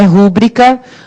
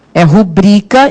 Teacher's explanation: qual é a sílaba tônica? O rubrica, está lá no BRI.